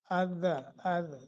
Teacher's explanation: हाँ अद तालु के साथ, यानी जुबान का अगला हिस्सा अगले तालु के साथ लगता है और सनाया अपना रुबाई सनाया के साथ जो है ना उनकी जड़ों के साथ दांतों की जब लगती है तो दाल का मखरज अद, तो दाल का मखरज आपने सही तरीके से अदा करना है।